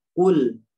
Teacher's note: ujung permukaan lidah ini disentuhkan ke depan ya, di gigi seri atau gigi taring. Jadi disentuhkan begini. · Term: lam